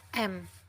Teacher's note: Yang kedua yaitu mim, dalam bahasa Indonesia m, bilabial, nasal, dan bersuara